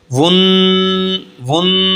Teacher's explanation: गुन्ना की आवाज़ नाक से निकलती है सख्ती के साथ। 1 अलिफ के बराबर हम नाक में आवाज़ को ठहराएंगे तो ये गुन्ना होगा।